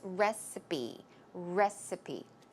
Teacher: the P sound here is recipe. It's closer to a B sound